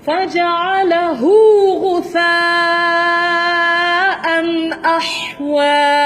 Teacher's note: Hu tu mat silah saghirah, tidak panjang.